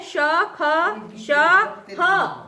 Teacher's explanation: इनके उच्चारण में जो वायु है वह घर्षण के साथ निकलती है, जिससे गर्मी उत्पन्न होती है। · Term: ऊष्म व्यंजन